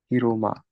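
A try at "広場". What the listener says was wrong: We actually haven't seen this one in this place yet, so it's not ma. You know how to read this guy? Yep, hiroba.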